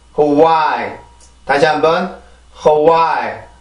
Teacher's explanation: 이 단어도 마찬가지로 강세가 지금 두 번째 있는 음절에 있어요.